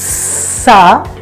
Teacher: look at the air coming out, the breath coming out, hissing in between two teeth